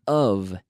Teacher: So when we have the O-F of, the F is pronounced like a V. That is, es decir, that is, vocalized.